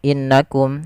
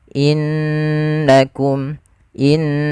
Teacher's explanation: beberapa kesalahan yang terjadi dalam melafalkan gunah tidak menahannya contoh innakum harusnya ditahan dulu innakum in sambil dimasukkan ke rongga hidung kita